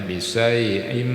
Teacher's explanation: Karena tanwin dari bisaiin, nah itu kan tanwin bertemu huruf mim. Maka adalah idgham membacanya bisai'im.